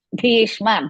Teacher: ಭೀ ಇಸ್ ಮಹಾಪ್ರಾಣ ಅಂಡ್ ದೀರ್ಘ